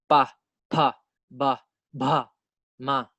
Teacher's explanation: we use our lips both the upper lip and lower lip when we pronounce the labial consonant